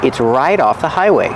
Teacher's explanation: you hear the T change to a fast D because it's between vowels